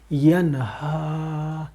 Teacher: اب ہا کو حلق سے نکالیں گے، یہ حلق کا جو تیسرا حصہ ہے سینے کے ساتھ، وہاں سے یہ نکلتا ہے ، آرام سے، جو سانس اندر گئی ہوئی ہے، ہوا گئی